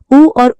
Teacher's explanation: उ और ऊ स्वर भी ओष्ठ्य स्वर कहलाते हैं, क्योंकि इनके उच्चारण में ओंठों की गोलाई बनती है।